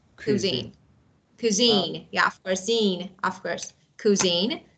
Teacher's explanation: So the second syllable is a stress.